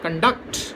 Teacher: So the accent changes to the second syllable when it is used as verb. So noun, conduct, verb, conduct.